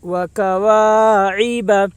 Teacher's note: الف سے پہلے زبر ہے اس لیے الف مدہ ہوگا، الف مدہ کو ایک الف کے برابر کھینچ کر پڑھیں۔ عین کے نیچے زیر ہے، زیر کو جلدی پڑھیں تھوڑا بھی نہ کھینچیں، معروف پڑھیں مجہول آواز سے بچیں۔